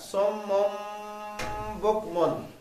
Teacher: صم نون تنوین ہے دو پیشوں کی بعد میں با آ رہی ہے اخفاء کر رہی ہے. صم یعنی آواز کو ناک میں چھپا لیں گے تو غنہ ہو جائے گا صم بکمن. اب بکمن کی میم پہ بھی نون تنوین ہے اس کے بعد آئین ہے جو حروف خلقی میں سے ہے تو نون ساکن اور تنوین کے بعد حروف خلقی آ جائے تو اظہار ہوگا نا.